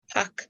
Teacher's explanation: So you'd actually take out the R from the park.